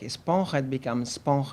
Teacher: we find also cases where the initial vowel is deleted so we have a word like espon becomes SP that also